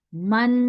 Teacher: ناک میں بھی جا رہی ہے, آواز ٹھہر بھی رہی ہے